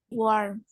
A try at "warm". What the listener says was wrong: Warm. Listen, warm. There is a letter M at the end. So you have to pronounce the letter, okay? So you say warm, warm.